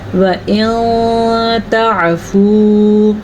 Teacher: نون کی آواز مکمل نہیں پڑھیں گے لیکن کسی حد تک چھپا کے غنے کے ساتھ پڑھیں گے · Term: اخفا